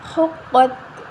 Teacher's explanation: قاف حروف مستعلیہ ہے، موٹا حروف ہے تو ہم اس کو موٹا پڑھیں گے